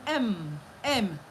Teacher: The voiced bilabial nasal.